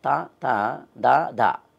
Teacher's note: తా తా దా దా అన్నప్పుడు నాలుకని దంతాన్ని తగులుతాం కాబట్టి దంతియాలన్నారు వాటిని